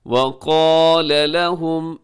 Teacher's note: قاف اور الف موٹے پڑھے جائیں گے، باقی سب حروف باریک پڑھے جائیں گے